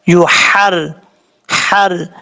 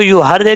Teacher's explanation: را کے نیچے زیر ہے، را بریک پڑھا جائے گا، یحری، یا کے بعد ہا بریک ہے، اس کو کلیئر ساؤنڈ کر کے پڑھنا ہے، یحر، حر، اس کو یو ہر دے نہیں پڑھنا، غلط ہو جائے گا، مسٹیک ہو جائے گی، آپ نے اس چیز سے بچنا ہے.